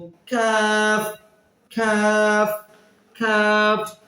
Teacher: জিহ্বার গোড়া থেকে একটু আগে বাড়িয়ে উচ্চারিত হবে। জিহ্বার গোড়া থেকে হবে কফ, মোটা হরফ, একটু আগে বাড়িয়ে হবে কাফ, এটা হচ্ছে পাতলা, এবং কাফ কাফ কাফ।